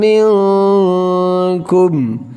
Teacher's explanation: یہاں پر اخفا غنہ ہے کیونکہ نون ساکن کے بعد کاف اخفا میں سے ہے۔